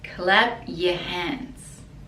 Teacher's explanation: Clap is this action, clap, and then the P, we don't really pronounce it, we just put the lips together